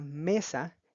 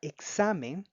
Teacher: Luego tenemos la palabra mesa y la palabra examen, que no se tildan porque terminan en una vocal, en el caso de la palabra mesa, y en la consonante N en el caso de la palabra examen, y aún así estas son consideradas palabras graves porque el acento prosódico se encuentra en la penúltima sílaba de esta palabra